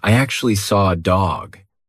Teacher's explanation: the intrusive R is when we insert an R to link to the next word, even though there's not an R written there. We just put one in.